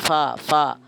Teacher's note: ഫാഇന്റെ പാട്ട് എങ്ങനെ നമ്മൾ പാടിയില്ലേ താഴെ ചുണ്ടും മേലെ മുൻപല്ലുകളുടെ തലയും ചേർത്താട്ടെ താഴെ ചുണ്ട് മേലെ മുൻപല്ലുകളുടെ തലയും ചേർത്തിട്ട് നേരിയ കാറ്റ് പുറത്തേക്ക് ഒഴുകും